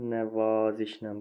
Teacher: İkinci hecanın saiti uzun tələffüz olunur.